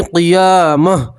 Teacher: گول تا کے اوپر وقف کریں گے تو گول تا کو گول ہا سے بدلیں گے اور ہا کے اوپر جزم پڑھیں گے